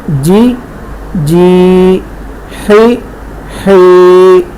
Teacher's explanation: یا ساکن ہو اس سے پہلے زیر ہو تب وہ یا مدہ بنے گی. ٹھیک ہے، زیر اور یا مدہ کی آواز میں فرق کریں گے اور یا مدہ کو تھوڑا کھینچ کر ادا کریں گے